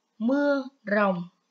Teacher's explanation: tiếng rồng có âm R khi đọc mình cũng cong lưỡi